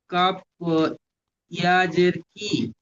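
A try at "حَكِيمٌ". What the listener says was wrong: টান দিন একটু, কাফ ইয়াজের কি, ইয়া মাদ্দা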